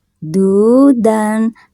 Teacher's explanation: du, dan, nah ini ada wawu sukun, sebelumnya harokat domah dibacanya 2 harokat